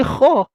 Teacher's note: Kha ni nafas akan terlepas. Itulah hams.